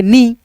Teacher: न में बड़ी ई की मात्रा इ का ध्वनि मिला देंगे नी थोड़ा सा खींच देंगे